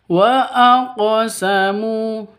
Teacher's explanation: Wa aqsamu aq qof. Qof itu hurufnya qalqalah. Karena di sini qofnya sukun, berarti sudah memenuhi syarat untuk disebut dengan qalqalah. Begitu harus dipantulkan cara bacanya.